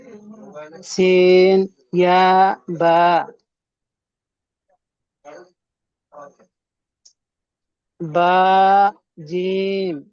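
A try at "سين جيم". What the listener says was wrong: তো এখানে সিন 3 আলিফ টান হবে, জিম 3 আলিফ টান হবে, টান দিয়ে পড়বেন।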